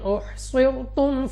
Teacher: صاد مستعلیہ میں سے ہے موٹا پڑھیں گے منہ اور آواز کو کھول کر